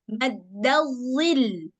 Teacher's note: Tapi lamnya itu jangan jadi lam tebal ya. Dia hanya perlu ditekan aja di lamnya bukan jadi tebal. Maddadzil. Macam kita bilang lam biasa cuman ditekan maddadzil.